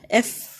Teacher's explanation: ایف آپ کے جو نیچے والے ہونٹ ہیں اس سے اندر آپ کے دانت لگیں گے